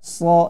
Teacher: huruf sod ini dia tebal, ya, sama tempatnya, tempat keluarnya sama, akan tetapi pangkal lidah naik ke langit-langit, ya. Itulah yang membuat tebal.